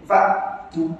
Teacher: Hamzah kalau mati, suara kena putus betul-betul.